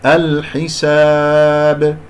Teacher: أقف على الباء المقلقلة قلقلة كبرى في آخر الكلام من غير شائبة